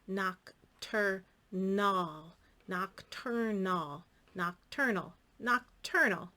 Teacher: It is another schwa sound. The A is in a non-stressed syllable, and we get a little lazy with it.